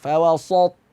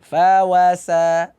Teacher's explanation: Sin tetap dibaca tipis. Dibuka mulutnya.